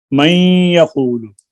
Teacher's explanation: نون کا یا میں ادغام غنہ کے ساتھ